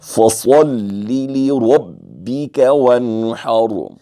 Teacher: نون ساکن ہے، اس کے بعد ہا ہے، تو ہا حروف حلقی میں سے ہے، ہم یہاں اظہار کریں گے، رکے گے نہیں، غنہ نہیں کریں گے، بلکہ جلتی سے پڑھ کر اظہار کریں گے۔